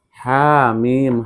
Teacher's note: Ha 2 harokat, mim 6 harokat ya.